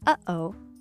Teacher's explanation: this quirky catch in your throat pause between uh-oh